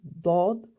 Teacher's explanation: Dad, c'est le milieu de la langue qui gonfle et qu'on le sent se coller au palais.